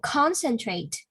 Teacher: Okay, concentrate the first syllable, the first stress on the first syllable